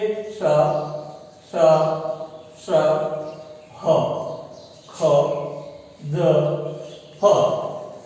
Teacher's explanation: कंठ और तालु या दूसरा जो भी कंठ के साथ अवयव है, उच्चारण अवयव, वो इतने निकट आ जाते हैं कि हवा संघर्ष करते हुए बाहर निकलती होती है। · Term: संघर्षी व्यंजन